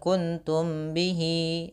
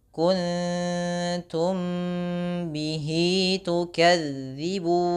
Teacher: mim mati bertemu dengan ba, di sini ikhfa syafawi, 2 harakat ditahannya. Jangan kuntum bihi, tapi tahan dulu.